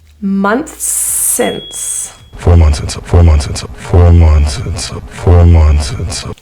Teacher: In months and since, those two words end and start with the same sound. So instead of saying it twice, months, and then since, it becomes linked. So you just say that S one time.